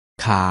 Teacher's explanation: คำว่าขาพื้นเสียงเป็นเสียงจัตวาไม่มีรูปวรรณยุกต์